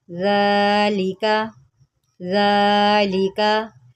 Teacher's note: ذال کے اوپر کھڑا زبر ہے، اس کو ہم نے ایک الف کے برابر لمبا کرنا ہے.